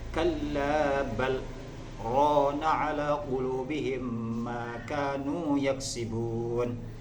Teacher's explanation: ketika kita mengucapkan kalimat bal, berhenti sejenak tanpa bernafas kadar satu alif, lah kemudian kita lanjutkan untuk melafazkan kalimat yang selanjutnya, yaitu lafaz rona. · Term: saktah